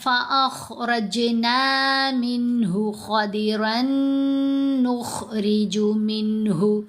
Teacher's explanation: اب یہ جو ہا ہے، یہ ہا اور یہ خا، تینوں کی آوازیں ڈیفرنٹ ہیں، تینوں کا مخرج ڈیفرنٹ ہے. خا گلے کے بالکل اوپر والے حصے سے ادا ہوتی ہے، منہ والی سائڈ سے جو گلے کا حصہ بنے گا، اور یہ درمیان والے حصے سے ہے، اور یہ گلے کے بالکل نیچے والے حصے سے یعنی چیسٹ والی سائڈ سے ہا.